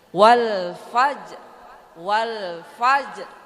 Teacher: jadi rnya itu enggak kedengaran bu ya tidak bersuara tidak keluar suara tapi mimiknya ke situ